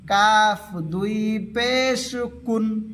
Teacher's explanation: কাফ আলা জিহবার সামনের থেকে অল্প আগের থেকে উচ্চারণ হবে